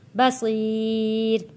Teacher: یا ساکن سے پہلے زیر ہے، حروف مدہ ہے تو حروف مدہ کو ایک الف کے برابر کھینچ کر پڑھنا ہے۔